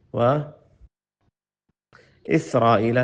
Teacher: سین کو واضح کریں اور را کو موٹا کریں